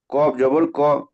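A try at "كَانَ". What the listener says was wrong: কব, ওটা কব নয়, কাপ। কাপ, ওটা কব। হুম, কাপ জবর কা না, ওখানে আলিফ আছে।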